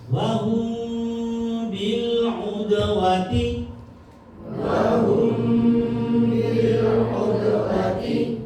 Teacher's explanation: Kemudian mim sukun ketemu ba, baca apa? Ikhfa syafawi. Bacanya sama dengung.